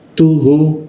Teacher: Tu biasa ujung lidah bertemu gigi, lalu hu di tenggorokan bagian bawah. Hu ya, seperti itu ya, tebal ya.